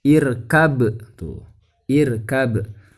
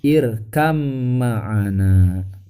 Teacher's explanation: Jadi dibacanya irkam ma'ana. Tuh, ba sukunnya dimasukkan ke huruf mim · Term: idgham mutaqoribain